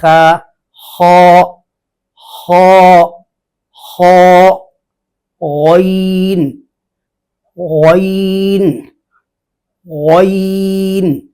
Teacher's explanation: دونوں کا مخرج اقصی حلق، انتہائی حلق، یا حلق کا وہ حصہ جو زبان کی جڑ کے قریب ہے، یہ وہاں سے ادا ہوتے ہیں۔ دونوں پر ہیں، دونوں کی آواز میں سختی نہیں ہے، نرمی ہے۔